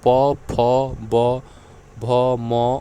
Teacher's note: इन अक्षरों के उच्चारण में दोनों ओठों का प्रयोग होता है